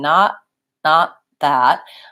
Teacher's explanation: I'm getting ready for the th as I'm making the stop T so I'm saying not not that again I think I'm stopping